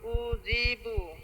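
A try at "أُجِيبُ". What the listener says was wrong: উ এর মধ্যে তো টান নাই, উজিবু, উজি, জিম শক্ত করেন, উজিবু।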